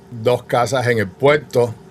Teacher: you're immediately deleting all of the consonants that you have at the end of a syllable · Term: papa in la boca